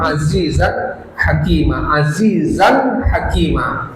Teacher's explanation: Ini izhar ya, izhar halqi. Jadi dibaca jelas azizan. · Jadi dibaca jelas azizan hakima. Ya, ketika tanwin bertemu ha.